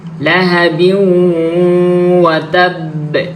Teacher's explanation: ওয়াও ইদগামে মাআল গুন্নার হরফ, তাহলে ইদগামে মাআল গুন্না হবে, গুন্না করতে হবে আমাদেরকে এখানে। লাহাবিউ ওয়া তাব, ওয়া তাবে, অনেকে কি করে ওয়াতাবে এমন ভাবে পড়ে।